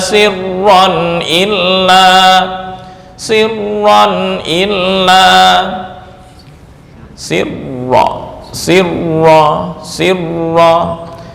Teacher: dari segi tekanan menurut urutan paling kuat di ra kemudian lam kemudian mim baru yang terakhir tanwin bertemu wau